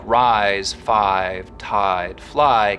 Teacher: words like rise five tied fly keep their full eye diphthong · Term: full I diphthong